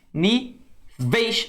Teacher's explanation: Olha como é que o E é bem mais forte que o I. Então o som cai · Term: ditongo decrescente